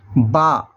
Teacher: دونوں ہونٹ کی تری سے مل کر با ادا ہوتا ہے